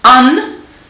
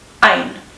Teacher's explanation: so we've got one vowel, right? An, and we're dealing with a diphthong, ein, right? So two vowels, an, ein.